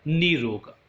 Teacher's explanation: इसी प्रकार निर प्लस रोग, यहाँ प्लस से पूर्व र, प्लस के पश्चात भी र, प्लस के पूर्व र से पूर्व नी में ह्रस्व स्वर जो कि दीर्घ में बदलेगा और प्रथम र का लोप होगा और रूप बनेगा निरोग।